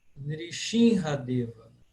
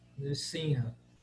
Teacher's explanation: Na verdade, essa pronúncia S ou X, ela é uma variante contemporânea. Hoje, na Índia, especialmente na Bengala, eles falam S como X.